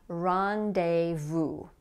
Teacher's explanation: It's not pronounced like that in French, but notice that like in French, the S here is going to be silent